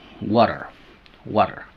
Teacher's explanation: cambiar el sonido original T por el sonido r suave del español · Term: flap